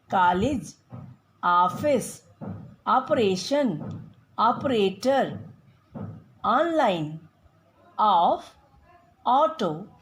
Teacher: इस ध्वनि का उच्चारण हिंदी का आ तथा ओ ध्वनि के बीच का है, जैसे कॉलेज, ऑफिस, ऑपरेशन, ऑपरेटर, ऑनलाइन, ऑफ, ऑटो आदि।